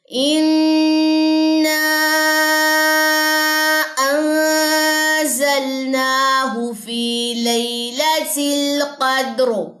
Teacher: را کی زیر گر گئی ہے وقف کی صورت میں، را خالی، ما قبل لیٹر خالی اور اس کے پیچھے زبر ہے تو وہ موٹی پڑی جائے گی۔ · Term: را موٹی